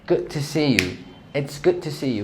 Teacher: Instead of pronouncing the D, you're just gonna say good to.